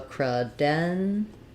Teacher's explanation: cre is going to sound like it's going to be very short with a reduced vowel